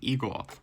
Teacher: there's no R at the end because my accent doesn't do that